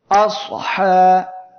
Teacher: সদ অক্ষরটি উচ্চারণের সময় দেখেন জিহ্বার গোড়া উপরের দিকে যাচ্ছে, তখনই এই অক্ষরটি মোটা হয়ে যাচ্ছে, আসহা। আসহাব এর সদ জিহ্বার আগা সানায়ে সুফলা এর আগা ও সানায়ে উলিয়া এর সাহায্যে উচ্চারণের সময় মোটা বা পোর হবে।